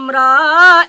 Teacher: জিহিবার আগার উল্টা পিঠ, তার বরাবর উপরের তালুর সাথে লাগিয়ে যার উচ্চারণ করতে হয়